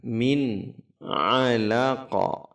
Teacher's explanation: nun sukun bertemu dengan ain. Harus jelas, tidak ditahan dan juga tidak dipantulkan